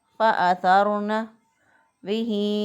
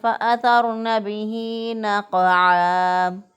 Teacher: کھڑی زیر جو ہے الف مدہ کے قائم مقام ہے، لہٰذا یہاں پہ ہم ایک الف کے برابر ہا کھڑی زیر ہی کو لمبا کر کے پڑھیں گے